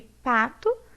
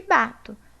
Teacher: p é uma oclusiva bilabial desvozeada. E o b é uma oclusiva bilabial vozeada.